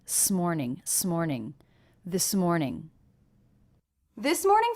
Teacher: it's almost like the S went on the next word